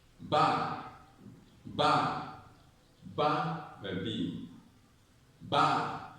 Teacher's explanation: Okay, ba has a stress, so the intonation goes up. Ba, ba. Then the other ones come down. · the stress syllable has a rising tone. The tone goes up. It's higher than the other.